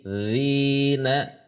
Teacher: Zi mad tabi'i tidak boleh terlalu panjang.